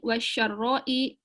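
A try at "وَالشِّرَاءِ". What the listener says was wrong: Wasyira itu kalau syarra mah keburukan. Kalau bayi itu kan jual, syira ya beli.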